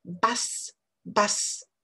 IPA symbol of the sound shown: bʌs